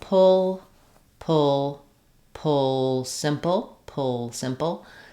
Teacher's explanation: it helpful to say it in the real world word uh with a stressed syllable on the first long stretched part and then making your pull with your syllabic L very short